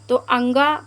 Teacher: 'अंगा' गले के स्तंभ में है , इसलिए यह गला और नाक होगा। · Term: अनुनासिक